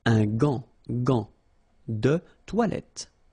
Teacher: you've got this an, so it's nasal, gant, and then final T is not pronounced here.